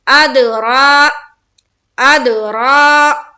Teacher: را کو ہم پر کریں گے اور ایک الف کے باقدر کھینچیں گے، کیونکہ یہاں پر را کے اوپر کیا ہے؟ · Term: کھڑا زبر